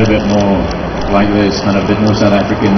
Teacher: a bit more South African where it's flatter vowels and I'm very lazy and talk like this.